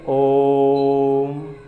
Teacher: कितना टाइम लग रहा है? तो इसमें अधिक टाइम, यानी कि तिगुना टाइम लग रहा है · जो मूल स्वर है उसका 3 गुना टाइम लगता है, यानी कि तिगुना टाइम लगता है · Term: प्लुत स्वर